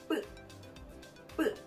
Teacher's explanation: 입술에 힘을 많이 주면서 소리를 높여서 뿌 이렇게 발음하는 거예요. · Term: 된소리